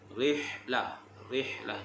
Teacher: Lembutkan ha, makhraj ha adalah di bahagian tengah kerongkong. Rihlah, rihlah, jangan rehlah.